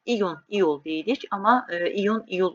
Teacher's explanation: Amma iyun iyul olmalıdır. Vurğunu sona atmalısız. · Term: vurğu sona